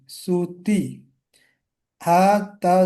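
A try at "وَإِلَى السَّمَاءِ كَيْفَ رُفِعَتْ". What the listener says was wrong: সুতিহাত টান হবে না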